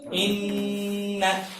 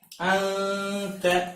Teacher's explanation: गुना की आवाज में जबान ये दांतों की जड़ के साथ लगती है, इख्फा में यहाँ खुली रहती है और आवाज को नाक में लेना होता है।